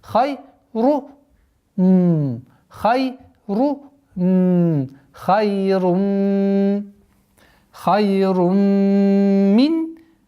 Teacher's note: Вот первое. Вот нужно обращать внимание, что вторая дамма уходит в мим